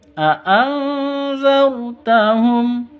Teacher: Nun mati bertemu dengan zal. Samar didengungkan.